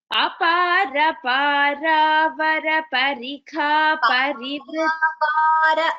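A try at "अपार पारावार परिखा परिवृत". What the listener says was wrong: Va is dirgha here. Para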